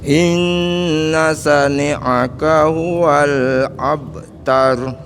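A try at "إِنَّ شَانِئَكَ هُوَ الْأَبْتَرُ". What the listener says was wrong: Syanya pendek, panjang Bapak. Inna syani'aka. Syanya panjang. Itu A-nya hamzah ya Pak ya, bukan A.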